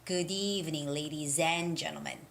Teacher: as if d and e is connected together